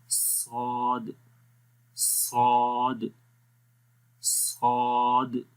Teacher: صاد کے اندر بھی صفت صفیر ہے، یعنی وسلنگ ساؤنڈ رہتی ہے، تو اس لیے اس حرف کے اندر بھی سیٹی کی آواز آئے گی۔